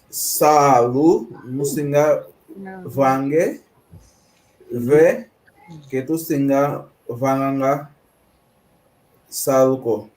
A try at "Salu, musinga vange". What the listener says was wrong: Salu, cuidado, não há vogal longa aqui. Salu, singa vange, ve, que tu singa vanga saluko.